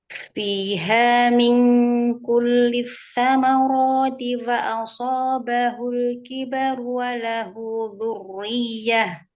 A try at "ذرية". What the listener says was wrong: Tipiskan. Ro-nya dialirkan, ro yang sukun pertama, tapi ro-nya langsung turunkan. Pangkal lidah turunkan, rahang bawah dan bibir turunkan. Biar tipis. Pangkal lidah jangan diangkat. Ujung lidah aja ya. Pangkal lidah jangan diangkat. Ujung lidah. Pangkal lidah jangan angkat. Ujung lidah aja. Nah, takrirnya kurangin rohoh aja.